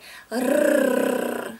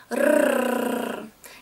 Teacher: your tip of the tongue goes up to your hard palate, namely to the front of your mouth. So, and in this case, the vibrations are very strong. Yeah, so you pronounced it like rrr. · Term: Russian R sound